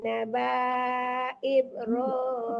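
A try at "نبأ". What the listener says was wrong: Nabanya nggak panjang, alifnya berhadarakatnya. Naba aib, jadi banyak jangan dipanjangkan. Alifnya ada harakatnya.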